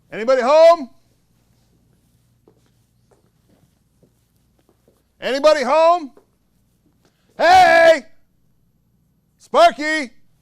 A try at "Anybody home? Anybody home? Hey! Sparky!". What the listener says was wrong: So it's too rushed. Those are different beats. Then looking around. Then save it. Then go to the stairs.